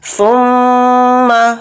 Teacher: میم کے اوپر تشدید ہے تو میم میں غنہ کر کے پڑھیں گے، ثم، اس طرح سے اس کے اندر غنہ ہوگا۔